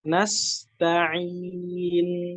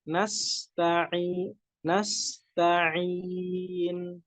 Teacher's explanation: Nunnya punya sifat tawasud, jadi dialirkan ketika mengucapkan huruf nunnya.